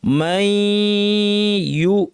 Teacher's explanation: এখানে দেখেন দুইটা ইয়া দিয়ে পড়বো, মাই, এই অংশে শুধু নাক থাকবে, এই জন্য এখানে লাল রং করেছি। মাই পড়ার সময় নাক থাকবে, ইউ বলার সময় নাক শেষ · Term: গুন্না সহ ইদগাম